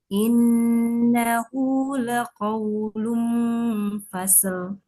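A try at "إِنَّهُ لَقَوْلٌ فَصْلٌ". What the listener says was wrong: Fnya harusnya tebal. Fasl fasl. Nah, gitu coba fasl.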